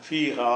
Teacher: மேல கூடு இருக்கு ஹா அந்த ஹாவை நீட்டுவதற்கு அலிஃபை போட்டாங்க ஹா ஃபீஹா அந்த அலிபை நல்லா நீட்டனுங்கிறதுக்காக மத்து போட்டாங்க ஃபீஹா என்று கொஞ்சம் கூடுதலா நீட்டிக்கிருங்க